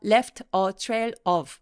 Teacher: 뒤에 단어가 모음으로 시작하는 단어가 있을 때 바로 앞에 있는 자음 소리들을 받아서 소리 되죠